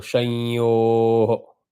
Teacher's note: you have to convert that anuswara to anunasika. So the sound has to come nasal.